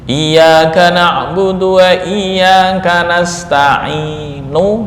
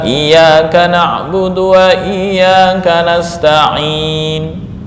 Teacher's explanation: Ismam adalah membaca dengan bibir mencucu, ya, ini khusus ke harokat dhammah